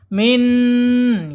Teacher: Secara makhraj ada di alisan ya, ujung lidah menyentuh langit-langit yang depan ya, dekat dengan pangkal gigi seri. Kemudian secara sifat ada di tawasud, yang pertama ya, dia mengalir tidak sempurna atau tertahan pun tidak sempurna. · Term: huruf nun